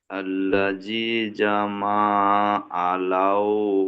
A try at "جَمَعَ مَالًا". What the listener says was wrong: আলা নয়, এখানে জিমটা পড়ছেন, মিমটা পড়ছেন, আইনটা ছেড়ে যাচ্ছে ভাই। জামা আমা। জামা আমা পর্যন্ত টানছেন, তারপরে দেখেন জামা আমা লাউ ওয়াদাদা, পড়ুন।